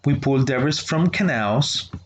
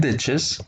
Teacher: we pull debris from canals. It goes up, and ditches goes down because we're finishing the idea. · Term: falling intonation